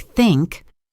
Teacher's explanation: Your tongue needs to come gently between your top and bottom teeth. For a word like think, it's a soft unvoiced sound. Just air passes through.